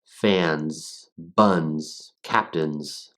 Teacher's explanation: We get that N sound toward the end, and the Z sound doesn't come through with a lot of the vibration that you would normally get. Instead, it's just surrendering into this sort of tss, tss sound.